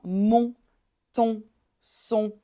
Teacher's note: là on veut pas entendre le N à la fin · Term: voyelle nasale